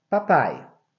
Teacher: na segunda sílaba nós não temos duas vogais aqui tá vendo Nós temos uma única vogal que é o a e o i é a semivogal